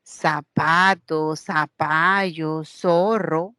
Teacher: el seseo en lugar de decir la Z la pronunciación de la interdental lo hacemos con una s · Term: ceseo